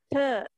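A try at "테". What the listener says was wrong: Tei. Ya, jangan lupa ada i-nya kan? tei, jadi tei.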